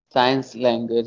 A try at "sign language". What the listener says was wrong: Sign, not science, sign language. Sign language. sign.